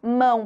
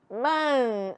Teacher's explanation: É o som da vogal que se prolonga. Eu não escuto o som da consoante. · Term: ditongo nasal